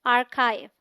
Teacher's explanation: अगर इसे आर्चीव बोल दें तो बड़ी गड़बड़ हो जाएगी, क्योंकि यहाँ भी च है ही नहीं, तो आर्चीव इनकरेक्ट प्रोनाउंसिएशन है। The AR sounds like R in car. This is the stressed syllable. The CH has a K sound. The IV sounds like IVE as in live.